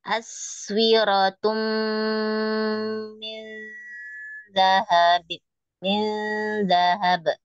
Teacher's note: Jadi sinnya ngalir tanpa di stop, misalnya as enggak di stopkan, jadi langsung mengalir.